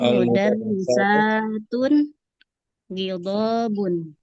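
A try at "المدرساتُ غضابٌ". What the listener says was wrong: Nah, al-mudarrisatu jangan tanwin.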